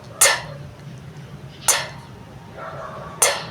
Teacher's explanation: Ang dulo ng dila na dumidikit sa loob ng mga ngiping itaas